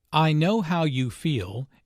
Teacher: notice the emphasis on feel